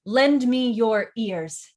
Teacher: four syllables one two three four and all stressed